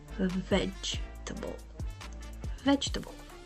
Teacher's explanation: stress only the first syllable veg and keep the others light